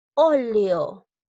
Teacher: Lleva la mayor fuerza de voz en la O. Es esdrújula.